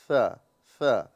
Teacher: सा की अदायगी में सीटी नहीं निकलेगी। इसमें सिर्फ हल्की सी हवा पास करना होता है।